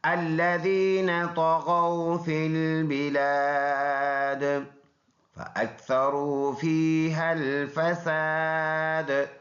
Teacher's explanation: یہ الف مدہ ہے، یہاں پر رکیں گے تو یہ زیر سائلنٹ کریں گے، دال میں قلقلہ یعنی آواز مڑ کے آئے گی